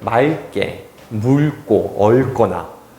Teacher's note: 무슨 말이냐면 어간 받침의 발음이 리을 기역이잖아요. 그때 대표음이 리을로 나면은요 뒤에 예사소리가 된소리로 바뀌어요